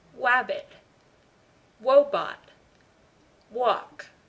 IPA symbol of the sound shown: w